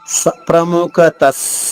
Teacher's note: విసర్గ తర్వాత స వస్తే విసర్గ ఉచ్చారణ స అవుతుంది